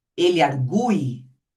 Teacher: quando a gente fala ele argui, é esse U que é forte